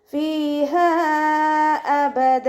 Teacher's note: മദ്ദക്ഷരവും ഹംസയും 2 വേർഡുകളിലായിട്ടാണ് വന്നിട്ടുള്ളത്, അപ്പോൾ അവിടെ 2ഓ 4ഓ ഹർക്കത്ത് നീട്ടിക്കൊടുക്കുക. മദ് ജായിസ് മുൻഫസിലാണ് കേട്ടോ.